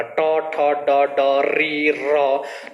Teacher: जहां हम जो है टॉ का उच्चारण करते हैं वहीं पर र का उच्चारण हो रहा, टॉ ठ ड ड री र। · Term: मूर्धन्य